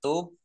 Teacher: dibaca memantul ditampakkan pantulannya